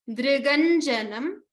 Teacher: We do not pronounce dr with a dri or a dru. It is just the dr. D plus r as in rishi.